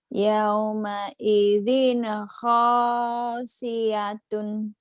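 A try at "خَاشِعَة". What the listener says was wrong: Ain. ianya dapat dari mana? iya, nggak ada iya di situ.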